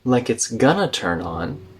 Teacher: going to connects into gonna.